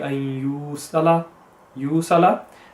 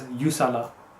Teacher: The important part here is the you. So that's haruf madda, so we have to prolong it. The mistake made is when it's just read as yusala.